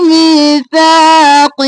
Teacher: می اور سا دونوں میں یا مدہ الف مدہ ہے، کھینچیں گے